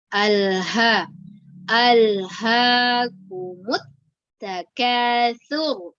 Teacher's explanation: Ha di bagian tenggorokan bagian bawah ya